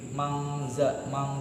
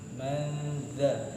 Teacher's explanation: Sementara kalau ketemu dengan huruf zal, maka dia kurang lebih seperti ini, manza. Jadi bibirnya langsung masuk ke makhraj huruf yang setelahnya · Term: ikhfa